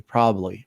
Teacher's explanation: when you speak fast, you don't pronounce the B very much there